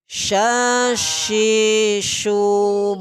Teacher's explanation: huruf syin ini keluarnya dari pertengahan lidah dengan langit-langit atas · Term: Huruf shin